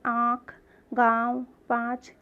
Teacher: किससे आवाज़ आ रही है? हलक से और नाक से।